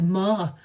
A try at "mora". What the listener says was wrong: Donc le R, on ne prononce pas comme en français. Ra, mora. On dit mora. Mais c'est tellement charmant, petit accent français, donc tu peux le garder si tu veux.